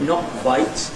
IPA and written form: nɒk kwaɪt (not quite)